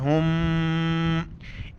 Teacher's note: गुना यानी नाक में आवाज़ छुपाना है